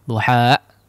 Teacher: kemudian di akhir seolah ada hamzah sukun di situ